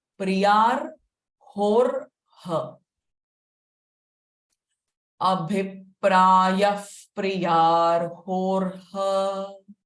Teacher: Abhipraya, the visarga sound will be fa. there will be two r sounds coming before the h.